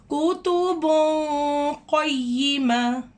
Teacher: اب یہاں پہ کتب ہے، یہاں پہ دو پیش ہے، تنوین ہے، تنوین کے بعد قوف آ رہا ہے. ہم نے یہاں پہ کتبن، بن کی آواز کو ناک کے اندر تھوڑا سا چھپا کر پڑھنا ہے